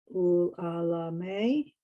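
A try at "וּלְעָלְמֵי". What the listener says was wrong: It's really ul al may. It's 3 syllables. al maya, like mommy.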